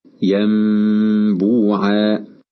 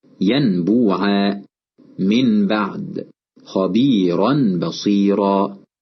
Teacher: تفرج الشفتان قليلا مع الإتيان بغنة بمقدار حركتين، كقوله تعالى ينبوعا، فكلمة ينبوعا النون فيها ساكنة وجاء بعدها حرف الباء فقلبناها ميما مخفاة، هكذا ينبوعا. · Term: الإقلاب